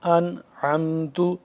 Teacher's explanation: حروف حلقی میں سے عین ہے آ گیا، تو یہاں پہ غنہ نہیں ہونا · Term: غنہ نہیں ہو رہا